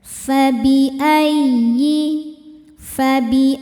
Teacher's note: Ya tasydid yang tidak didahului tanwin atau nun sukun, maka cukup pakai naber. Jangan ditahan suaranya. Naikkan intonasinya saja.